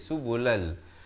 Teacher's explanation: وَجَعَلْنَا فِيهَا فِجَاجًا, samarkan, irfa dua harakat, dari fijajan jadi fijajan subulal. Di sini masuk tanpa dengung, daripada subulan jadi subulal